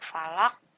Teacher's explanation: Nah, ini huruf qafnya harus dipantulkan walaupun berharokat kasroh, cuma harus disukunkan, dimatikan. Ini disebut dengan qalqalah kubro ya.